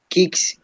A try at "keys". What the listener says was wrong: No, ¿dónde está la K? Fíjate, tienes que leerlo tal como yo te lo estoy diciendo, así, kiss. Como, casi como diciendo beso, kiss. It's almost the same pronunciation. no hay ni una D, no hay ni D ni K entre la Y y la S. ¿Hay alguna consonante ahí? No.